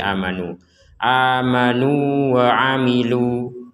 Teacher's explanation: ini kata waamilunya kita baca pendek Karena bergabung dengan asalihat namun ketika kita potong menjadi waamilu maka panjangnya dua harakat